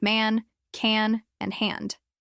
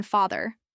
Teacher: This sound doesn't exist in many languages, so it's often replaced with a more open a sound like the one in father, but the English vowel here is tighter and a bit more nasal. Try stretching the sound when you say man.